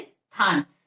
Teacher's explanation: उच्चारण में सा से पहले ई का ध्वनि आती है